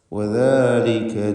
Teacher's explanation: നാവിൻ്റെ അറ്റത്തിൻ്റെ മുകൾ ഭാഗം മേലെ പല്ലിൻ്റെ മുൻപല്ലിൻ്റെ അറ്റവുമാണല്ലോ അതിൻ്റെ മഖ്റജ്. വദാലിക ലൂസാക്കി ഉച്ചരിക്കണം, റഖാവത്തിൻ്റെ ഹർഫാണ്